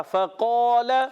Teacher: काफ के बाद अलिफ भी मोटा · फा की अदायगी वही दांतों के किनारे, ऊपर वाले दांतों के किनारे, नीचे वाले होंठ के तर हिस्से से